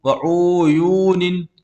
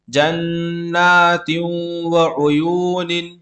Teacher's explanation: عین کو نہیں کھینچنا ہے کیونکہ عین پر پیش ہے